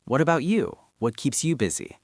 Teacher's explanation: Notice how my voice goes up slightly at the end to show interest. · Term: intonation